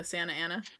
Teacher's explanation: in California we like almost don't say the T for anything